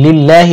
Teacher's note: এই আল্লাহ শব্দকে বারিক করতে হবে কারণ আল্লাহ শব্দের পূর্বে জের দেওয়া আছে হাজির হি লিল্লাহি ওয়াকফের সময় হা সাকিন হবে উচ্চারণ হবে লিল্লাহ